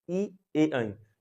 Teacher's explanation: जीभ जो है बिल्कुल एकदम आगे से सटी हुई है। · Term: अग्रभाग